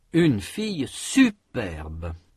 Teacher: Il y a un accent sur la première syllabe de superbe. Cet accent est surtout marqué par l'intensité. La syllabe est prononcée avec une plus grande intensité. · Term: accent d'insistance